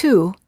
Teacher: the lips are tense and rounded as if you're blowing a balloon and the tongue is slightly tense and raised high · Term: oo sound